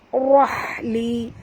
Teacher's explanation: Rabbish rahli, ra kena baca tebal, ha tipis.